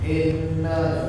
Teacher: huruf alif kasrah kita baca dengan i, ya, i, jangan e.